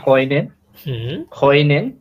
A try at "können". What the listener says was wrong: একদম হ উচ্চারণ, না না, একদম খইনেন বলতে গেলে আপনার হ হয়ে যাবে আবার। খইনেন না, খইনেন, খইনেন, ঠিক আছে? জাস্ট হ্যাঁ, ওটা উচ্চারণ করার সময় জাস্ট মুখটা একটু বেশি গোল করবেন, জাস্ট এতটুকুই। কইনেন, ঠিক আছে? আবার খ উচ্চারণ করতে যায় না এটারে।